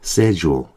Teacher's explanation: 그래서 스케줄 안 하고 schedule 이럽니다. 참고적으로 영국에서는요. 이 SCH를 한 번에 발음해 버려요. 그래서 CH가 소리가 아예 안 나버립니다. 그래서 영국 사람들은 이 단어 발음할 때 schedule 이 정도로 발음합니다.